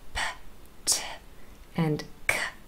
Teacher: P, t, and k are all unvoiced. There's no vibration from your vocal cords here. There is b, d, and g, much louder.